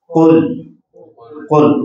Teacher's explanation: یہ زبان کی جڑ اور اوپر کا نرم تالو یہ آپس میں جب ملتے ہیں تو ادا ہوتا ہے قاف. قاف زبر کی حالت میں تو نمایاں ہو جاتا ہے، زیادہ موٹا پڑا جانا، زیر کی حالت میں تھوڑا کم ہوتا ہے، اور پیش کی حالت میں زبر کے بعد کا درجہ رہتا ہے. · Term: بڑا قاف